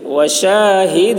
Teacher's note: شین کی آواز سٹی کی جیسی ہوگی